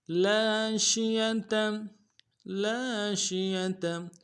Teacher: شین کو تفشی واضح کریں گے